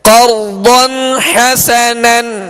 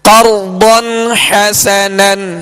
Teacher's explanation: قرضاً پہ غنہ ہم نہیں کریں گے اس لیے کہ یہاں اظہار کا قاعدہ ہے